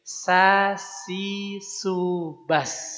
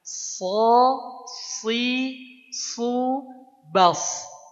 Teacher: Nah tebalnya si pangkal lidah kita diangkat jadi so, si, su, bas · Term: shad